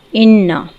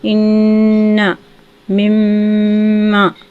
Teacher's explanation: اِنَّا مما، ٹھیک ہے، ان دونوں میں غنّہ ہوگا، یعنی کہ آواز کو تھوڑی دیر ناک میں ٹھہرا کر گنگنی آواز میں اس کو پڑھیں گے ، اس کو غنّہ کہیں گے۔ اسی طرح سے قاعدہ نمبر